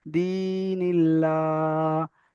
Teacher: এখানে লামের উপর খাড়া যাবার রয়েছে, খাড়া যাবার আলিফ মাদ্দা সমতুল্য, তাই এক আলিফ পরিমাণ টান দিয়ে পড়তে হবে · আল্লাহ শব্দে লাম তাসদিদের পূর্বে জের এসেছে, তাই লামকে আল্লাহর লামকে বারিক করে পড়তে হবে, আল্লাহর লামকে বারিক অর্থাৎ লা পড়তে হবে, লাম খাড়া যাবার লা, দিনিল্লাহ, হাজের হি, দিনিল্লাহি।